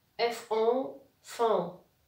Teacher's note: J'ai la voyelle O ici, mais elle est suivie d'un N, donc c'est une voyelle nasale. Je mets après le N.